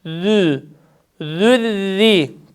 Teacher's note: Peltek harf eee zel harfi harekesi ötre olduğu için dudaklarımız tam ileride. Zü zülziri peltek harften ince ra'ya geçiş yapacağız ve ses tam iyi olacak.